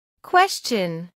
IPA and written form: ˈkwestʃən (Question)